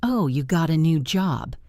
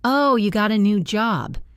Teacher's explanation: said with a rising, enthusiastic intonation. · said with a falling, flat intonation.